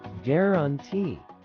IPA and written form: ˌɡɛrənˈti (guarantee)